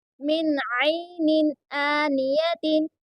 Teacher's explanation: اب یہاں پر دیکھیے اظہار ہو رہا ہے کیونکہ نون ساکن کے بعد میں عین آیا ہے اس لیے یہاں پر اظہار ہو رہا ہے اور اسی لیے یہاں پر غنہ نہیں کریں گے جلدی پڑھیں گے اور عین کو درمیان حلق سے ادا کریں گے.